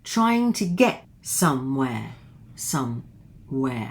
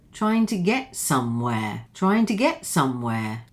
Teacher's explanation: now the intonation here, trying to get somewhere, somewhere, and here it lifts at the end